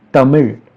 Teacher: the last L in the word Tamil is actually R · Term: retroflex approximant